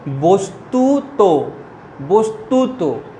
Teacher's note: শেষে শেষ বর্ণটায় ওকার যোগ করবে